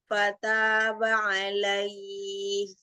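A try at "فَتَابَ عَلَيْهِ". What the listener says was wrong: Hati-hati haknya agak tipis ya. alaih. Rokoah pada ha dan ha berarti. Ya, jadi sedikit aja lagi, cuman jangan, jadi karena dia rokoah itu, jadi harus lebih embus lagi. Ini kan rokoah pada huruf hamas judulnya, lebih sulit.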